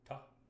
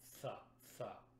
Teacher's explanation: Clean consonants would be things like T or D, t, t, t, or d, d, d. There's a very clear, precise point of contact, ta, as opposed to a TH sound, tha, tha, where it's a little bit thick.